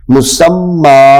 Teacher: جی آگے وقف، مسمى، اب یہاں پہ وقف کی صورت میں اس کے اوپر کھڑی لگ جائے گی، مسمى ہے تو تنوین لگی ہوئی، تو تنوین کو لمبا نہیں کرتے، لیکن یہاں پہ جب وقف کریں گے تو تنوین ختم ہو جائے گی، حرکت رہ جائے گی، زبر آ جائے گی